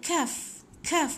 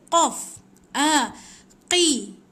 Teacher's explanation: Depan sikit kaf. Kaf. Satu lagi qaf. Dekat anak tekak dalam sikit.